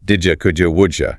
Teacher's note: when a word ending in a dit sound is followed by u. The d and the y sounds merge to create a j sound.